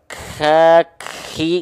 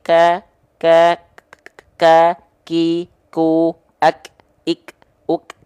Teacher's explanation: kalau huruf Kaf ini dia hanya berupa percikan-percikan nafas saja karena huruf Kaf disandingkannya dengan sifat dari segi suara yaitu kuat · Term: syidah